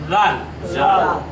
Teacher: জাল জাল এটা জাল এটা অত্যন্ত নরম করে উচ্চারণ করতে হবে জিহ্বার আগা এবং সামনের দাঁতের আগা একত্রিত করে অত্যন্ত হালকাভাবে নরমভাবে নরম করে উচ্চারণ করতে হবে